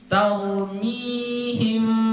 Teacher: Ya, ikhfa harus disamarkan. Maka menyamarkan penyebutan huruf mim, maka bibirnya tidak dirapatkan. Jadi dibaca taumihim, gitu, gak dirapatkan. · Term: furjah